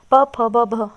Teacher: प वर्ग प फ ब भ हम बोलेंगे ये वर्ग, तो हमारा जो होठ है ऊपर नीचे लग जाएंगे। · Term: ओष्ठ